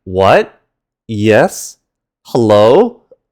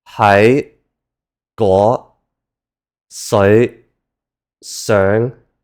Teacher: This one is the high rising tone. This is another fairly simple one, and it's as if you're sharply asking a question, like, "What?